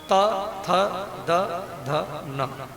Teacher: जब जीव दांत में टकराए गी तो त थ द ध न बोलेगा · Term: दंत वर्ण